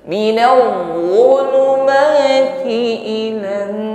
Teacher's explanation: ditahan pada nun, bertasydid, sempurnakan bunyi dengungnya.